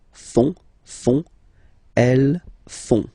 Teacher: font, final T not pronounced